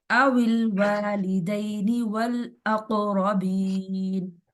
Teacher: را کو موٹا رکھنا ہے، قاف پر قلقلہ ہو رہا ہے